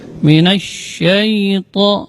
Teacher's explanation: huruf sya keluarnya dari tengah-tengah lidah. Ini termasuk huruf tafasyi.